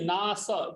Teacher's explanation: न त्वेवाहं जातु नासम, नाशम नहीं, नास छोटा स है, दंत्य स है